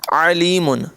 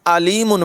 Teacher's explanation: عین حلق کے درمیان سے ادا ہوتا ہے، اس کی آواز نمایاں ہوتی ہے، اور حمزہ یہ حلق کے نچلے حصے سے ادا ہوتا ہے